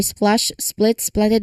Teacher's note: This combines the S sound followed by P then L all in one smooth sequence.